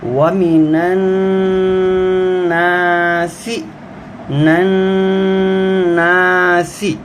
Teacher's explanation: نون پر غنہ بھی کریں گے اور اس کو تھوڑا سا لمبا بھی کرنا ہے کیونکہ یہ الف مدہ کا حرف ہے۔